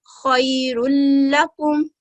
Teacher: जैसे कि फतातैन है यहाँ पर, तो हम खैरुन नहीं पढ़ेंगे बल्कि एक हरकत को पकड़ते हुए लाम के साथ मिलाएंगे, मर्ज करेंगे और इसको इदगाम करेंगे। · अगर लाम मुशद्दद और रा मुशद्दद से पहले नून साकिन और तनवीन हो तो इदगाम करते हुए नून साकिन और तनवीन की आवाज अदा नहीं करते। इदगाम कामिल में नून साकिन और तनवीन की आवाज को अदा नहीं करते और तनवीन की सिर्फ एक हरकत पढ़ी जाती है।